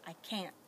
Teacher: Can't, short, abrupt, don't pronounce that T. It's kind of like you almost pronounce it, but then you stop.